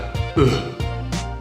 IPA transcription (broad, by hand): ə